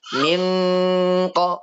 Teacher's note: Oh, ternyata ini hukumnya nun sukun ketemu huruf qaf, berarti bacaan ikhfa. Bacaan ikhfa. Berarti bacanya harus disamarkan.